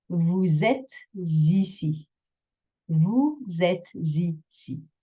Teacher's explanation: Vous êtes ici will become double Z liaison because we have an S into an E and another S into an I.